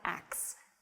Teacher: it's reversing the consonants in the word ask